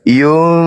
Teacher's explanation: nunnya tidak kentara, fa-nya pun tak kentara, dia berada di tengah-tengah antara nun dan fa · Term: Ikhfa